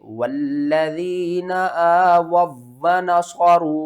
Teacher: वाव साकिन से पहले पेश है, हरूफ मद्दा है, एक अलिफ के बराबर खींचना है, लेकिन ऊपर छोटी मद है, मद्दे मुत्तसिल, तो इसको आपने 3 अलिफ के बराबर खींच कर पढ़ना है